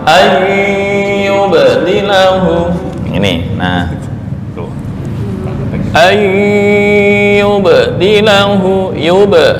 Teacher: itu 2 bibir, cuma jangan sampai keluar angin ya